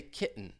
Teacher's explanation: instead of a true T, I'm going to say kitten with a glottal T